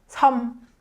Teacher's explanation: you really have to cut that m sound at the end and just say 섬. So you stop right before making that m sound.